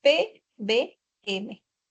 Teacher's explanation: interactúan ambos labios, el labio inferior y el labio superior. Por eso se llaman bilaviales. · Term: sonidos bilaviales